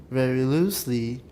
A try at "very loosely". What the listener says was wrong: the very is too low you didn't stress it at all you need stress but it's a non-tonic